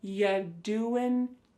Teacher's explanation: When we say you doing anything fun instead, you're going to hear y doing ya. The word you is reduced to y.